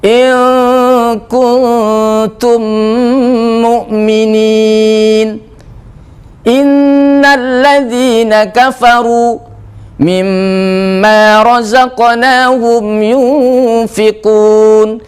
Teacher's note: Itu ada suara nun dan mim sengau atau gunnah.